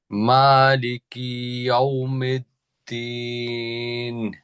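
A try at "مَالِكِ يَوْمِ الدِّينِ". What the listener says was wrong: কেন যেন ইয়াউমেদ দিনের মতো শোনা যায় আপনার পড়াটা। ইয়াউমিদ্দিন।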